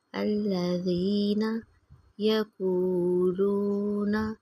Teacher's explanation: یا کی مثال حروف مدہ ہے، 1 فنگر کے برابر لمبا کریں گے